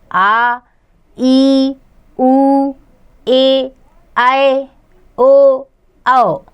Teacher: जिन स्वरों का उच्चारण करते समय ह्रस्व स्वरों से लगभग दुगना समय लगता है, उन्हें दीर्घ स्वर कहते हैं